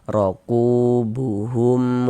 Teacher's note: Ada huruf waw sukun, sebelumnya ada harokat dhammah, maka huruf yang memiliki harokat dhammah itu dibaca panjang. Sehingganya ku dibaca panjang. Mad tabi'i panjangnya 2 harokat.